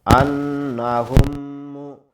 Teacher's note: মিম সাকিনের বামে মিম অক্ষর পাওয়া গেছে, তাসদীদ ধরে গুণনা করে পড়তে হবে। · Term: মিম সাকিনের ঈদগম